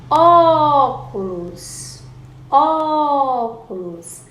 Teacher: A sílaba que eu mais demorei para chamar foi o ó de óculos. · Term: sílaba tônica